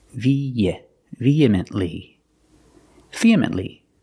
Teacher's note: You link the E and the E with the Y sound.